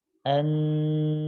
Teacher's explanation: ada sebagian suara yang masuk ke rongga hidung terlebih akan semakin terasa jika huruf nun ini kita tahan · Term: gunnah